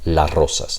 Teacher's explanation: So it is plural, but we drop the S because it's impossible to produce the trill, right after an S. So in anticipation, that happens.